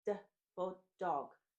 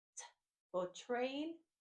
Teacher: they make the same mouth shape. It's just one is voiced and one is voiceless.